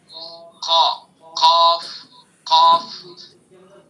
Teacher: قا، قاف، قاف بلندی، اس کے اندر بلندی ہے اور اس کو پر پڑھنا ہے